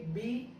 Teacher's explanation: बी को आप बोलोगे तो दोनों लिप्स टच होंगे